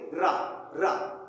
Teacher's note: हम जब र कहते हैं तो हमारी जीवा कंपन करती है। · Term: प्रकंपित व्यंजन